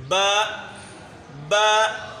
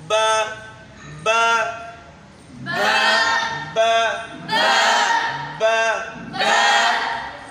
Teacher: आखिर में जब बा रुकेगा तो रुकना जो है ये नहीं चाहिए, बल्कि आवाज़ जो है हवा में ख़त्म होनी चाहिए